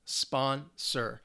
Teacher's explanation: 2 syllables. And the stress is on the first syllable,